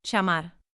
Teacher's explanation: in Argentina and Uruguay, llamar, can sound like sh.